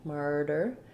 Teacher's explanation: in american english we use a flap there for that t murder even maybe just a full d sound i'll write it